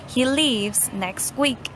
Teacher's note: Speakers usually elide the T sound.